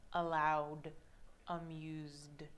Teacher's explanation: we're going to see the letters ED and we're going to hear D, D, D. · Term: ED pronounced as D